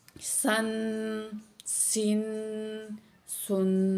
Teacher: सीन दो ज़बर सन, सीन दो ज़ेर सिन, सीन दो पेश सुन। इसको जो है सीटी की आवाज़ आएगी सीन में से